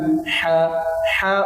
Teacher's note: হা উচ্চারণ করার সময় গলার মধ্যখান থেকে উচ্চারিত হবে। হলকের মধ্যখান হইতে আইন হা উচ্চারিত হয়।